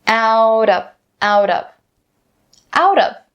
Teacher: We'll bring that t sound over from out to of. Now, of course, don't forget to turn this T sound into a flab D sound.